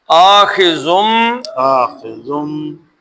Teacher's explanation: نون ساکن کے بعد با آ گیا، تو اب کیا پڑھیں گے؟ میم